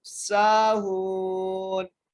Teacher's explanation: سین کو ایک الف کی مقدار کھینچ کر اور ہا کو بھی ایک الف کی مقدار کھینچ کے پڑھنا ہے ، کیونکہ یہاں پر واو مدہ کا قاعدہ لگ رہے ہیں،